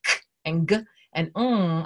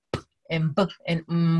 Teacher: the sounds like k and g and ng are much harder than something like p and b and m, which are right up here in the front